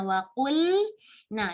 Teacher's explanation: Jangan sampai kita bacanya waqunna, nggak harusnya waqulna, diperjelaskan harf lam. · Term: izhar